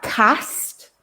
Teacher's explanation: i'm using a sound which is the big open ah sound in cat